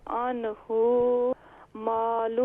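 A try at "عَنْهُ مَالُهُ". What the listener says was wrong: عنہ نہیں ہے، ہا کو شارٹ ساؤنڈ کریں، عنہ مالہ،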